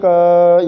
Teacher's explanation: पहले क बाद में जो आपको ध्वनि सुनाई दे रही है क यहां पर अ की ध्वनि है उस अ का संयोजन आपने जो किया है उस वजह से